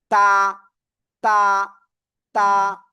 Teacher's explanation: তো এটা কি অক্ষর জানেন? এই যে জিহ্বার আগা, উপরের দুই দাঁতের গোড়ায় লাগান।